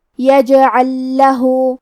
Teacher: آخری میں حرف اللام ہے اور اس پہ جزم ہے، پھر حرف اللام آتا ہے کلمت لہو، یہاں حکم ہے ادغام مثلین تام، مطلب ہم پہلے لام کو دوسرے لام میں ملا کے ایک ہی لام تشدید کے ساتھ پڑھیں گے